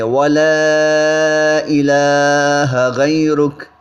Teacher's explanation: و تعالی جتنا آ لمبا پڑھیں گے اتنا ہی لا ہوگا، و تعالی جدک ولا الہ غیرک، ولا الہ، الف مدہ کے بعد حمزہ دوسرے کلمے کے شروع میں آ گیا ہے، مد منفصل بنے گی، اس کو ہم 3 الف جو ہے اس کو لمبا کر کے پڑھیں گے